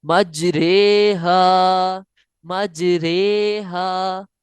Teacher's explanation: यानी कतरे के रे की तरह पढ़ेंगे, रा नहीं पढ़ेंगे, ना ही री पढ़ेंगे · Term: इमाला